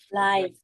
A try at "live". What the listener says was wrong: Yeah, no, not live. Live. Yeah, so it's more like live. Live. Live. Almost 2, almost, yeah, live. Almost 2 syllables. Okay, it's very common in English for us to run it all together, live. Okay, but in Gaelic it's live. Yeah, live.